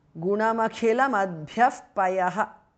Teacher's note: Visarga changes to upadhmaniya.